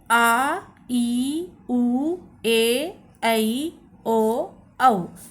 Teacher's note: दीर्घ स्वर आ इ उ ए ऐ ओ औ ये सात होते हैं। इनको बोलने में इस ह्रस्व स्वर का डबल समय लगता है। अर्थात दो पाई का समय लगता है।